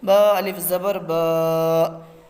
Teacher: الف جس سے پہلے زبر ہو زبر کو تھوڑا کھینچ کر پڑھیں، معروف پڑھیں، مجہول آواز سے بچیں